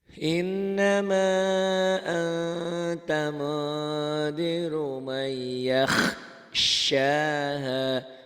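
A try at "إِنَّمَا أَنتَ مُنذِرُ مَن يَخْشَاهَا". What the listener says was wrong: Shinnya belum keluar tuh.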